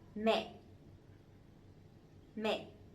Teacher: But this one has the dot, the dấu nặng, the strong tone, so it has to be down and it has to be stronger a little bit